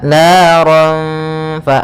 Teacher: Maka makhraj huruf fa, makhrajnya adalah gigi atas, gigi seri atas bertemu dengan bibir bawah. Maka fa ada aliran nafas. Fa memiliki sifat yaitu hamas.